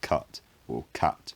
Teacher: so the vowel unrounded kut became something like cut over time this unrounded vowel lowered in the mouth and across modern dialects a low back vowel is now common